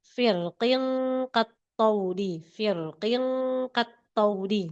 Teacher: lafaz firqin boleh tebal boleh tipis. hanya dalam keadaan wasol. Kalau wakaf enggak.